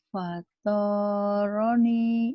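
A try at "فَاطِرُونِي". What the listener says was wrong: Enggak, panjangnya ujungnya doang.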